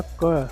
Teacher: जैसे हमने क का उच्चारण किया, क का उच्चारण किया, तो क का उच्चारण करने में हमने कहा क, उसके साथ में देखेंगे क अंत में आ रहा है अ, क के साथ में अ भी आ रहा है, तो इसके उच्चारण में हमने अ स्वर की सहायता ली।